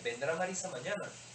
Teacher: Estas van entre signos de interrogación y presentan una entonación especial con un final ascendente